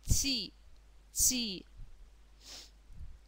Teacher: следующий слог Это нечто среднее между Ч И Т Да а не похож слог по произношению ни на ч ни на Т что-то среднее